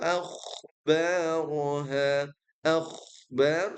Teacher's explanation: mengalir dan tebal mengalir karena dia rikhwah tebal karena istiala